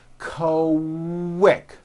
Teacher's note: pronounced with a K and a strong W sound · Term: Q sounds